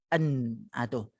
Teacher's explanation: Nun, an. Kalau tuan-tuan sebut an, maka kita akan rasa rongga hidung ni dia bergetar. An, tu. Itu yang namanya gunnah.